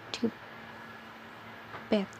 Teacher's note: Bagian oral diblokir dengan menekan ujung lidah ke alveolar.